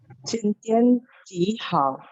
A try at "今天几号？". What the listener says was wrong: Nadanya ya Bu. Hao nada 4 ya.